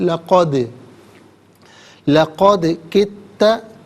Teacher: حرف قلقلہ ہے تو قلقلہ ہوگا، آواز لوٹتی بھی محسوس ہوگی